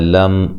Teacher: میم ساکن کا اظہار ہے، غنہ نہیں کریں گے